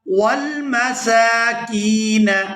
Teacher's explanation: یہاں کاف کو یا ساکن کے ساتھ ملائیں گے تو کھینچ کر ادا کریں گے